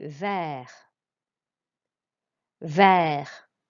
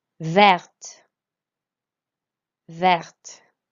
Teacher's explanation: Verte, we pronounce the T here because it's an E at the end.